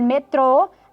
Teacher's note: a palavra no português metrô é oxítona, porque a sílaba forte é a última.